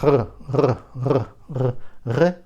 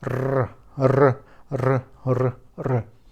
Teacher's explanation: With the help of uvula here, it will be like in French.